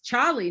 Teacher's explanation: Nobody says the R in Charlie in this area